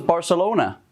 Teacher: Latin Americans and andalusians pronounce C's S's and Z's the same way